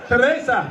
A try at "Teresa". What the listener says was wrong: Yeah, roll that R.